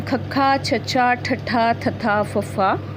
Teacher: ਅਨਾਦੀ ਅਤੇ ਮਹਾਪ੍ਰਾਂਤ ਧੁਨੀਆਂ ਹਨ ਖੱਖਾ, ਛੱਛਾ, ਠੱਠਾ, ਥੱਥਾ, ਫੱਫਾ